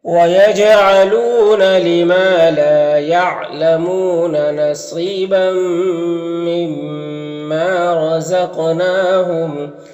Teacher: نون میں کھڑا زبر تو اسے ایک الف کے برابر کھینچیں گے، کیونکہ یہ الف مدہ کی طرح ہوتا ہے تو اسے اس طرح سے پڑھیں گے۔